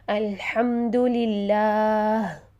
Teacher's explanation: تو دیکھیے میں وقف کرتی ہوں یہاں الحمدللہ، تو میں نے ہی کو ہا ساکن میں چینج کر دیا، ہا کی زیر کو ساکن میں چینج کر دیا، تو یہ میں نے سکون عارضی کیا جو کہ مجھے لکھا ہوا نظر نہیں آ رہا، لیکن میں نے خود اس کو ساکن کیا۔